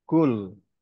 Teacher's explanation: kul ya dipangkal lidah ya, bukan pangkal tenggorokan